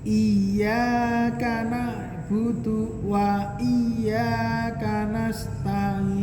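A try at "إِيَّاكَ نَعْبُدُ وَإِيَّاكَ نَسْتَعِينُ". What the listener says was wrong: Nah, ni tadi masih apa namanya? Masih bukan a. Tapi nga. Nah, tadi masih nga, bukan a. Lebih dipertajam lagi coba, Pak. A. Ainnya. Nasta'in.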